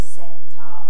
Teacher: my japanese version of my name is seta with a kind of hiatus in the middle · So the preceding vowel is shortened somewhat if you've got this geminate consonant. It sounds shorter to me in any case. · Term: geminal consonant